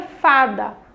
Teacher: O fá, ela é a penúltima sílaba, então ela é chamada de paroxítona.